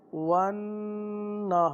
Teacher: اس را کے نیچے زیر ہے تو اس را کو باریک پڑھیں گے